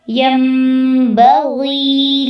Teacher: نون کی آواز کو میم میں بدل دینا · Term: اقلاب